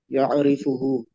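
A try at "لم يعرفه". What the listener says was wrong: Lam lam ya'rifhu. Ya'rifhu. Kan ada lamnya. Betul, lam ya'rifhu dulu. Lam ya'rif.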